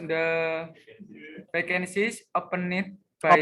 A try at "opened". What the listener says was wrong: opened, bukan open it.